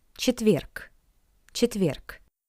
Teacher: The consonant G at the end of this word also sounds like its paired voiceless consonant K.